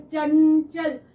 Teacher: जीभ जो है तालू को छूकर आ रही है चंचल तो इसकी साउंड भी डिफरेंट हो गई तीनों की साउंड